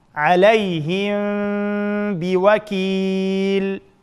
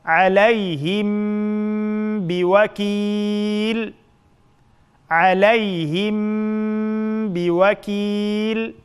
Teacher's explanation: sakinlik mimning keyindan ba harf kelsa, shu sakinlik mimni yushirib, g'unna bilan birga talaffuz qilamiz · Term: ixfa